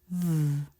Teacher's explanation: v is voiced, meaning you make a sound with the vocal cords